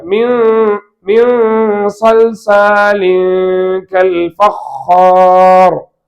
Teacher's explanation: இப்ப சுக்கூன் பெற்ற நூனுக்கு பிறகு சாது வந்திருக்கிறது என்றால் நூனை மறைக்க வேண்டும்.